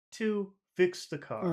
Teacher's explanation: usually you start a phrase high and you want to step down to low, but here we're just going to have to make all of this low. So we can make too high and the rest of it will be kind of low. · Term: pretty flat phrase